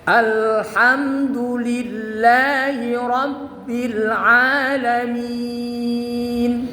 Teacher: Al juga idhar, ham juga idhar. Al namanya idhar qamari, amnya namanya idhar syafawi. Sama-sama idhar, sama-sama jelas.